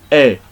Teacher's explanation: we don't say e as in English no we open our mouth a little bit we say a and we find this in the example of